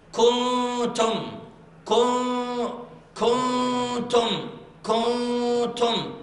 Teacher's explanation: أخفي النون في التاء إخفاء تام، تكاد النون تضغم. · تكاد النون عندها إخفاء تام قوي ولكن غنى مرققة